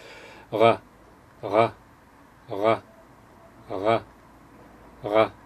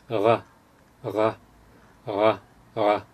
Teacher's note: moving the back of your tongue backwards just a little bit, and that should sound like something like this: ra, ra, ra, ra, ra. · we actually call it an approximant because it's kind of in between a consonant and a vowel, so it's a uvular approximant